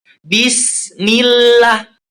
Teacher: Tapi itu harokatnya kasroh. Berarti sebelum huruf jalalah itu ada kasroh. Cara membacanya tipis.